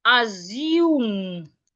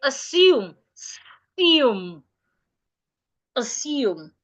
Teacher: is wrong this is wrong is not assume it is wrong the S remains a s do not change it to a zed say assume assume assume so it is assumed that the first